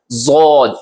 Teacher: ज़ाद का मखरज, जबान की करवट और ऊपर के दाढ़ों की जड़। दाढ़ू बोलते हैं, जैसे मैंने आपको क्लास में बताया था, वो दांत ऊपर वाले जिनसे हम सख्त चीज को चबाते हैं, उनकी जड़ से लगाना है और जुबान की करवट यहां से है, ज़ाद, ऐसे।